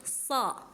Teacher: so itu dia mempunyai sifat isti'la. Artinya pangkal lidahnya dia naik.